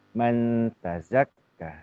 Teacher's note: Maka huruf za ini dia terusnya semestinya terus mengalir gitu ya